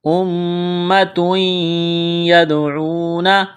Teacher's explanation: دال ساکن ہے، دال پر قلقلہ کریں گے